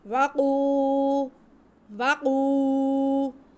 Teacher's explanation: قاف حروف مستعلیہ میں سے ہے، اسے ہم موٹا کر کے بھی پڑھیں گے، اور اس پہ قاف پہ پیش ہے اور واو ساکن ہے تو یہ واو مدہ ہے، قاف کی آواز کو ہم کھینچ کے پڑھیں گے۔